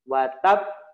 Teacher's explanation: Sukun kan dulu watab baru di mantulkan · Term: Qalqalah Akbar